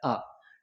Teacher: जीभ के मध्य भाग से बोला जाता है उसे मध्य स्वर कहते हैं। मध्य स्वर केवल आ एक ही होता है आ।